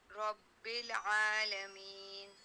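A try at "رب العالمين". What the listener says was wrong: احسنتی.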